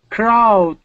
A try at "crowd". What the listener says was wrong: Give me a D sound at the end. Crowd. I'm still missing that D. We want to say crowd.